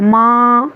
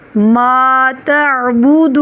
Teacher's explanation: اس کو ناک میں نہیں لے کے جانا، ماں اس طرح سے نہیں پڑھنا، یا ما جھٹکا بھی نہیں دینا، بلکہ ما تعبدون، یہاں پہ بھی عین میں واضح فرق کریں۔